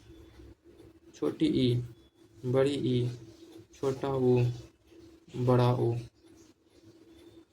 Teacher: संवृत्त स्वर मुख लगभग बंद होता है। यानी मानो तो लगभग बंद ही होता है।